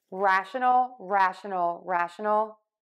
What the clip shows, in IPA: ˈræʃənəl